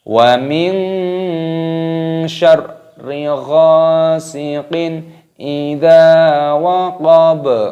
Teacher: Idza waqab, baknya di sini berharokat fathah, ada tanda waqaf berhenti, maka baknya di sini dimatikan, dibaca sukun.